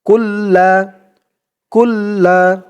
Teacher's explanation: কাফ দিয়ে লাম ধরবে কাফ লাম পেশ কুল লাম জবর লা লামের উপরে তাসদিদ তাই লামটা দুইবার পড়তে হবে